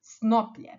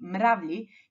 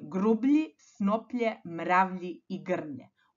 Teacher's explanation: To vam je kada između glasova b, p, m i v i glasa j umetnemo samo slovo l. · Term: epentesko ili umetnuto l